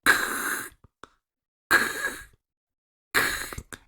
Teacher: Un sonido stop porque se detiene y explota. Y un sonido voiceless porque no tiene vibración. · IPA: /K/